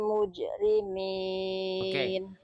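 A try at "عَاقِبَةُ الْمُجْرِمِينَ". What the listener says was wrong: Jimnya dijelaskan kolkolahnya. jelaskan aja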